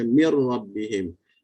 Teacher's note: Macam baca mir rabbihim, nun dah hilang dah, dia dah jadi pada huruf ra. Okey. Makhraj dia hilang, sifat dia hilang.